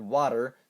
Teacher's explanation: Taps are found as the T in the word water, so say that word and feel your alveolus become prey to the tip of your tongue.